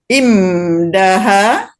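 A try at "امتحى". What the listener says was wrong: Imtaha. Tanya tetap ta.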